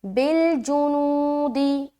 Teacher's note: نو میں کھینچیں گے اور جیم اور دال کو بالکل جلد ادا کرنا ہے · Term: واو مدہ